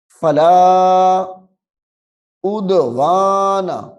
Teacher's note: دال کو ظاہر کر کے پڑھنا ہے کیونکہ حروف قلقلہ میں سے ہے